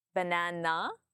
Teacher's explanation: my tone comes up at the end